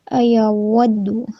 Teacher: ایود واو کے لیے ہونٹوں کو گول رکھیں گے، ٹھیک ہے۔ دال کے اوپر دمہ ہے، اس کو بھی ہم ہونٹوں کی گولائی سے ادا کریں گے۔